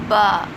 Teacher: اندرونی ہونٹوں کے ملنے سے با ادا ہوگا، با۔ اردو میں بھی اسی طرح ادا ہوتا ہے، بہت آسان ہے اس کی ادائیگی۔